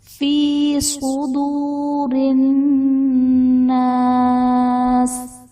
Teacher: فی صدور الناس، فی میں یا ساکن سے پہلے زیر ہے، یا مدہ کا قاعدہ ہوگا۔ صدور میں صاد حرف مستعلیہ میں سے ہے، تو یہاں پر صاد کو پر یعنی موٹا کر کے پڑھیں گے، اور الناس میں نون مشدد غنہ کریں گے۔